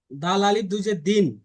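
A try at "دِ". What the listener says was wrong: দাল ভাই আলিফ নাই।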